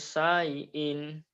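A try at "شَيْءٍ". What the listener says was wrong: ya syai jangan syai'in jangan ke hidung syai'in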